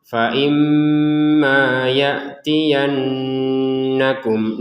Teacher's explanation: Kalau mim bertasydid ini dibaca dengan dengungan ya. Dibaca dengan dengungan. Faimma itu ada di rongga hidung.